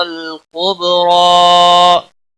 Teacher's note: را کے اوپر کھڑی زبر ہے، ایک الف کے برابر کھینچ کر پڑھیں گے. را کو موٹا بھی پڑھیں گے. وقف کی صورت میں بھی ایک الف کے برابر ہی کھینچ کر وقف کریں گے.